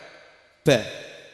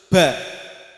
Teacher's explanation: yang ba itu kedua bibir rapat dan tekan, tidak usah dimasukkan bibirnya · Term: huruf ba